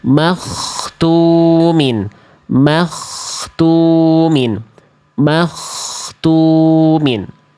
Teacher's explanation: Tapi yang betul adalah yang dnya tidak berubah huruf knya mengalir suara knya tidak tertahan. Knya tidak terputus. Knya dibaca tebal.